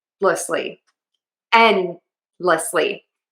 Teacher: So my N, D, and L are all in the same place.